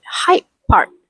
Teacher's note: The D in height changed to match the P in part. This is a sign of assimilation where one sound blends into another to make speech smoother.